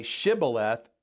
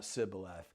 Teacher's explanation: the ephraimites could not make the sh sound they could only make a s sound